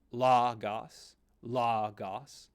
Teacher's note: the acute accent means the pitch goes up in your pronunciation